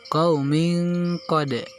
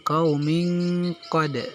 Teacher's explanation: qalqalah yang jenisnya adalah qalqalah sugro, yaitu qalqalah yang bunyi pantulannya tidak terlalu keras atau tidak terlalu kuat. Jadi cara membacanya adalah dibaca dengan nada seadanya.